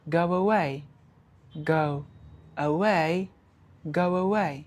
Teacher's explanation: So we have introduced a W sound there. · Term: intrusion